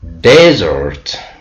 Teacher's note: we have stressed the first syllable. The meaning is dry climate. It means when you pronounce on the first syllable, it's a noun.